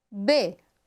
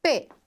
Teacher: Para o B, eu tenho um som interno. Para o P, eu só tenho o impacto. B, B, B, B.